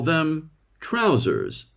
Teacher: British people call them trousers but they don't pronounce the second r